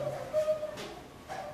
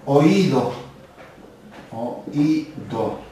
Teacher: De acuerdo a si no tuviéramos en cuenta esta tilde, estaríamos equivocándonos y refiriendo probablemente a diptongo, pero como lleva la mayor fuerza de voz en la I o la tilde, estamos frente a un hiato